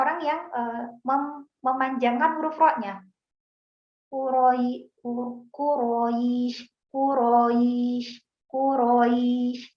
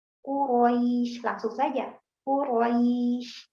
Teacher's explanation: Nah, padahal ro-nya harusnya pendek.